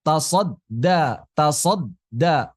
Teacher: Ada dorongan sebentar di awal tasodda.